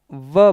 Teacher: ऊपर का जो दांत है वो नीचे के होंठ के पास आता है। ध्यान रखिएगा, होंठ दांत के पास नहीं जाता है, दांत तो होंठ के पास आता है व। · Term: दंतोष्ठ